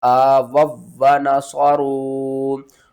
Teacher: बहुत से लोग पढ़ते हैं आ वाउ व नसरू, वो क्यों पढ़ते हैं, क्योंकि यहाँ पर हमने वाव साकिन से पहले पेश है तो इसको हमने खींच कर पढ़ा